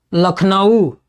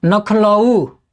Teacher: भोजपुरी में वर्ण विपर्यय की भी प्रवृत्ति पाई जाती है